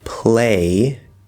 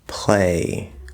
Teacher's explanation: Instead of saying play, we can say play with that dark L sound. · In version 1, we compared the R consonant sound to the light L, which is what I like to call the full L consonant sound. However, there is a secret trick that many natives use, and that is to use the dark L, or what I like to call the half L vowel sound, in the place of where we would use the light L or full L consonant sound.